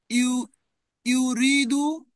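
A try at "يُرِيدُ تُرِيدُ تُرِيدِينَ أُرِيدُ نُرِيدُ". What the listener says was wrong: Excellent.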